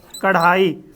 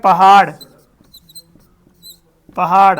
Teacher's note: तो जीव ऊपर उठती है और झटके से नीचे आती है जीव पहले मूर्धा को टच करती है फिर झटके से नीचे आती है · एक चोट के साथ इनका जन्म होता है, मतलब जीभ ऊपर उठती है और झटके से नीचे गिरती है, तब इनका जन्म होता है, यानी तब इनका उच्चारण होता है। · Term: उत्क्षिप्त व्यंजन, ताड़नजात व्यंजन